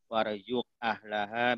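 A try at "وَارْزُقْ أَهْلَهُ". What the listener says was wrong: Warzuq ahlahu, bukan ahlaha.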